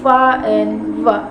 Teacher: Labiodental sounds, fa and va. Consonant sounds which are produced by contacting the lower lip and upper teeth